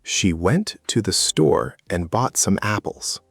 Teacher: Went, store, apples. Those are the stressed words, the important information.